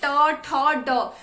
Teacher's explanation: जैसे हम ट वर्ग बोलते हैं, ट, ठ, ड, हमारी जीभ मुड़ जाती है। मुड़ने का मतलब मूर्धा। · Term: मूर्धन्य